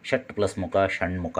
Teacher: ಆ ಕೊನೆಯ ಅಕ್ಷರಕ್ಕೆ ಜೊತೆ ಮಾಡಲಿಕ್ಕೆ ಇದು ಟ ತನ್ನ ಸ್ಥಾನವನ್ನು ತನ್ನ ಅನುನಾಸಿಕ ಣಕ್ಕೆ ಬಿಟ್ಟುಕೊಟ್ಟಿದೆ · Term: ಅನುನಾಸಿಕ ಸಂಧಿ